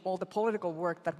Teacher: So, right, for American speaker, that first syllable's unstressed, right? But you hear how she's saying pol, that's giving a lot of attention.